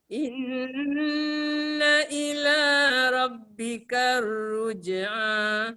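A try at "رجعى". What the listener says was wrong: Ka tu nipis, ra tu tebal. Kalau kita baca bikar dia jadi nipis dekat ra sekali.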